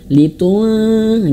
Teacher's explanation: Nah, ketika nun mati bertemu huruf dzal maka lidah kita litung. Nah, ketika masuk ke nun lidah kita sudah menyentuh ujung gigi dari atas. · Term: ikhfa